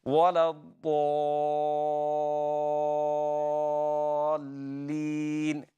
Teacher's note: There is no break in the variation in the alif when you're pronouncing after Dad. It's same full mouth continues all the way.